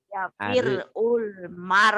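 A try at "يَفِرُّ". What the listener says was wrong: Ya, bukan ya firul, ya firrul.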